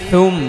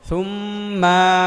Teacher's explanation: এখানে সুম্মা বলা যাবে না, থা জিব্বার আগা দাঁতের আগা, অর্থাৎ জিব্বা একটু বের করে বলতে হবে, থু নরম করে।